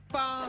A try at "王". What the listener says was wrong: 我 说 王 他 说 方 王